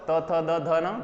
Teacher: अपन उच्चारित करते हैं तो जीभ है वो दंत के लगती है, दांतों के पीछे से लगती है।